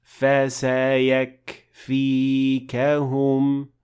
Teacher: pronounce the hams of the letter kaf in this case, so it will be audible and properly applied when you pronounce the entire word.